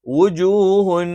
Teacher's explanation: ഉച്ചാരണം നിങ്ങൾ നിർബന്ധമായും ശ്രദ്ധിക്കേണ്ടതാണ് പല ആളുകളും വ എന്നുള്ളത് അതിന്റെ ഉച്ചാരണം തെറ്റിച്ചഉച്ചരിക്കുന്നുണ്ട് വ എന്നുള്ളത് ചുണ്ട് വൃത്താകൃതിയിൽ വെച്ചുകൊണ്ട്തന്നെ ഉച്ചരിക്കണം